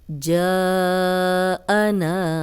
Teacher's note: جا الف مدہ ہے، آگے حمزہ آ گیا ہے تو یہ 4 حرکات لمبا ہو گیا ہے